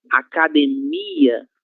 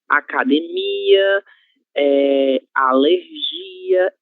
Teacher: elas vão ter como sílaba tônica a penúltima sílaba, formada por uma consoante e uma vogal